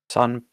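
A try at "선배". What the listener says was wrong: Son. Yours sounds like song. An N sound at the end. Son. You're doing like so. Your mouth is making more like a I don't know, like you're pushing out your mouth. But son.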